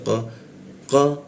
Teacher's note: Lalu qo nah huruf qo itu di sikut tenggorokan lidahnya kita naikkan ya qo tidak ada hembusan udara ketika membaca qo